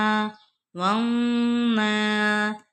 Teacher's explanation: یہاں نون مشدد ہے، اس پہ ہم غنہ کریں گے